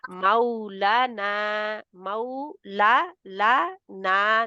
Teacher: مولا لا نا دونوں ہی دو حرکات کھینچے جائیں گے، دونوں ہی مد کے ہیں